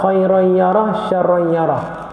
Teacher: Syarran yarah idgham ma'al gunnah, tamim bertemu dengan ya.